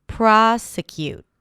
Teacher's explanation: The primary stress here is on the first syllable